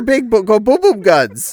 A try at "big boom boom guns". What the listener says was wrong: didn't quite pronounce boom all the way, though, is the issue.